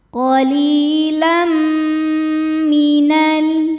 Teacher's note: Cara membacanya tanwin dimasukkan ke mim disertai dengung.